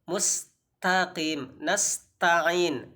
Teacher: jadi ta itu harus ada hentakan nafas sedikit sehingga disitu lebih sempurna bacaan kita